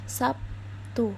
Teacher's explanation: Jadi, kadang jika kita menyebutnya atau mendengar kata Sabtu itu biasanya disebut dengan kata Sabtu, bukan Sabtu. Tidak menggunakan konsonan B, tapi menggunakan konsonan P. Karena huruf P ini merupakan huruf yang tidak bersuara.